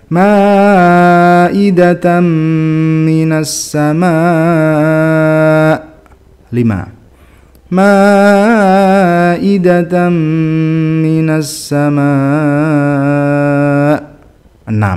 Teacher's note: Waqaf untuk mad wajib mutasil boleh dibaca 4, 5 atau 6 harokat.